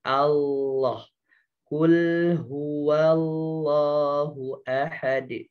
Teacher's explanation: lam ketika menjadi lafadz Allah ya ujung lidahnya disentuh dan ditempelkan ke gusi atas, jadi jangan di bawah.